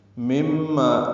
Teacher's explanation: نون ساکن کے بعد میم آنے کی وجہ سے ادغام ہے، یہ ادغام ناقص غنہ ہے، یہاں پہ مما ما الف مدہ ہے، 2 حرکات لمبا کریں گے.